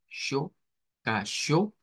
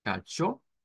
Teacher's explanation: no es cho, sino que es SH